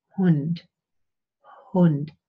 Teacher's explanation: We have a glottal fricative, but it's very, very soft.